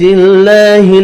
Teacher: اللہ کا نام زیر کی وجہ سے باریک پڑھنا ہے۔